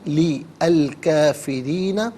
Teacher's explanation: لام کے نیچے زیر، اسے الکافرین کے لام ساکن کے ساتھ ملائیں گے، درمیان میں سے الف یعنی حمزہ کو حذف کریں گے۔ کافرین میں کاف کھڑا زبر کا، کاف الف زبر کا، دونوں طریقوں سے پڑھنا درست ہے۔